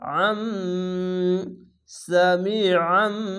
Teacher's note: ছোট্ট একটি মিম আছে, এই মিমকে ধরবেন, যের পাশে ইয়া সাকিন একালিফ টেনে পড়বেন এবং আইনটিকে মোটা করে গলা চিপে পড়বেন। এরকমভাবে সিন যাবার সা, মিম ইয়েজের মিম, সামি আইন, এখানে দুই যাবার উচ্চারণ করবেন।